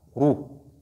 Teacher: Lorsque cette lettre Ra porte Dhamma, elle est lue aussi avec emphase